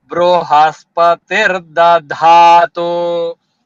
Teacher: Da is small, dha is big. Da small da we call alpa prana. Dha is mahaprana, second da.